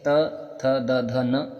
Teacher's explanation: तो साथियों इस प्रश्न का जो सही जवाब होगा वो होगा दंत्य। ठीक है, दांत और जीभ के स्पर्श से बोले जाने वाले वर्ण को दंत्य वर्ण कहते हैं